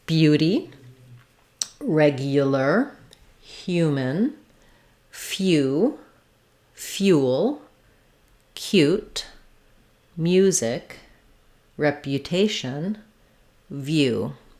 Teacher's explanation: We do still maintain the Y glide, the Y sound like you. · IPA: /ju/